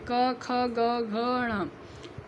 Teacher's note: यह सारे कवर्ग होते हैं और यह कंठ से निकलते हैं